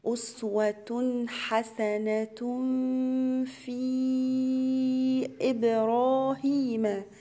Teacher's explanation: تنوين ورا حرف الفاء يبقى هنا فيها غنة إخفاء، وكلمة في عليها علامة المد، هنا مد جائز منفصل 4 حركات.